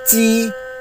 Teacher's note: First intonation is a flat intonation with a slightly high pitch.